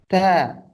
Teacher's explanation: Ta, di lidah kan? Ta, ujung lidah kita bertemu ke gusi atas. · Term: huruf lidah